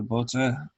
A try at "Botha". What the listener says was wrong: you don't pronounce the T it's Botta Botta